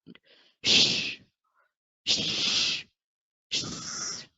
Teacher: So here it is unvoiced, which means we don't have to use the vocal cords.